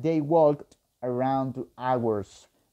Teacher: esta L se vuelve voiceless, no se escucha, no se pronuncia